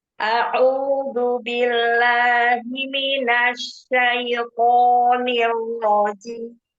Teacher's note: Itu syatnya kurang tapasyi ya. Anginnya kurang nyebar.